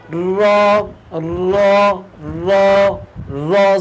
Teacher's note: জিহবার আগার পিঠ তার বরাবর উপরে তালুর সঙ্গে লাগাইয়া র